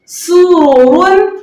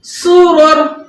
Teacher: حالت وقف میں دو پیش کی تنوین حذف ہو گئی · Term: وقف بالاسکان